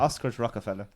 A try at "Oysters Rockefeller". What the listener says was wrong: Oysters, Rockefeller. You said Oscars.